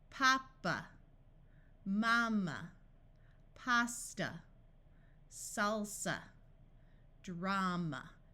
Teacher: in all of these the first sound is the clear a sound and the one at the end is the uh sound · Here are some words where the first A has the broad A sound and the A at the end schwas.